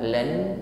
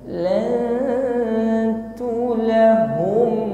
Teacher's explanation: Berikutnya nun sukun bertemu huruf ta, ada hukum ikhfa, maka mengucapkan lan, nun sukun kita samarkan pada huruf ta